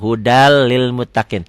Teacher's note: Idgham bila gunnah, idgham yang tidak memakai dengung ke hidung · Idgham bila gunnah. Hudan lil muttaqin dibacanya jadi hudal lil muttaqin. N-nya jadi hilang.